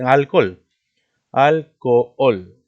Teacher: Porque no se pronuncia la H, ¿no? Hay dos vocales fuertes, forman hiato. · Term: H intermedia